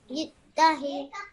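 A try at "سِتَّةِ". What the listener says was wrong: Sittati. This one is a ta. This is not a ha. This is ta al-marbuta, which means that this would be produce the same sound as a ta. So, sittati.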